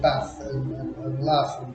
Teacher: pronounced more as a short a similar to northern english as in bath and laugh